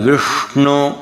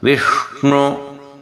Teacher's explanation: ನಾಲ್ಗೆಯನ್ನು ಹಿಂದಕ್ಕೆ ತಗೊಂಡೋದ್ರೆ ಪೂರ್ತಿ ಆ ಶಕಾರ ಪ್ರಯೋಗ ಆಗತ್ತೆ